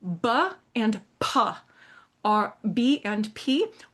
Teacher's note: a voiced and a voiceless bilabial stop made with both of your lips